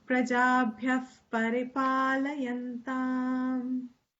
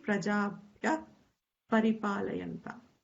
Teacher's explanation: It sounds like a fa because the Visarga is followed by pa.